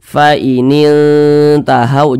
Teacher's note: disamarkan faain tahau jangan dibaca faaining tahau jangan tapi di samarkan lebih condong berbunyi n tapi disamarkan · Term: ikhfa Hakiki aqrab